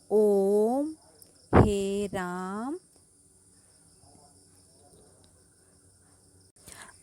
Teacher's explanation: ह्रस्व और दीर्घ स्वर से 3 गुना इसका उच्चारण करने में समय लगता है